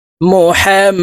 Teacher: মিমের উপরে তাসতিদা আছে তাই এই হা মিমের সাথে গুন্নার সহিত পড়তে হবে